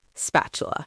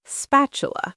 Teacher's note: The middle of the word has a T in it. But in natural spoken English, especially in American English, that T often sounds more like a soft D, spatula. The way the tongue moves makes the T softer, spatula.